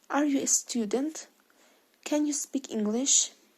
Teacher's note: A general question is spoken with a rising intonation.